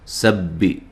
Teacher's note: سبی، سین کو با سے سختی سے ملانا ہے، تشدید ہے، اور سین کو باریک سیٹی سے ادا کرنا ہے